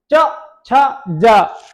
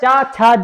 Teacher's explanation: मेरी जीभ जो है तालु में लग रही है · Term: तालु वर्ग